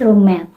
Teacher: At interface between word or parts of words, we find two clearly audible sounds pronounced together with a prolonged complete closure